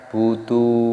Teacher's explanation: Dalnya dibaca panjang, ada wawu sukunnya, mad tabi'i dipanjangkan 2 ketukan.